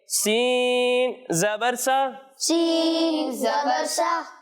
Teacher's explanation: جب ہم سین اور صاد کی ادائیگی کریں گے تو ان دونوں میں سیٹی کی آواز آئے گی